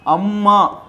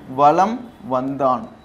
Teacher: மகரத்தை அடுத்து வகரம் வந்துச்சுன்னா தன்னுடைய அரை மாத்திரையிலிருந்து கால் மாத்திரையா குறைஞ்சு ஒலிக்குமா? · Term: மகர குறுக்கம்